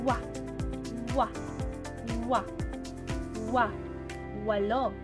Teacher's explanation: sa pagbikas ng letrang W sa punto ng artikulasyon na velar na bahagi ng pangala-angala at sa paraan ng artikulasyon na malapatinig